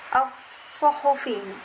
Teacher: karena alif lam bertemu dengan huruf shad bertasydid dan dibaca langsung as-suhufi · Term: alif lam syamsiyah